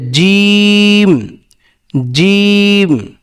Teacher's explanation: জিমটা উচ্চারণ হবে জিহ্বার মধ্যখান, জিহ্বার মধ্যখান তার বরাবর উপরে তালুর সঙ্গে লাগাইয়া জিম, জিম একটু চেপে ধরে বলতে হবে যে জিম, জিম।